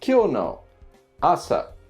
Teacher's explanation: this is an atamadaka word it starts off at the top and then goes down